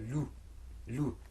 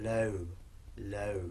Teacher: We have a word which has a fatha followed by a ya with a sukoon, makes an a sort of sound, and a word which has a fatha followed by a waw with a sukoon, makes an o sort of sound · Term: diphthong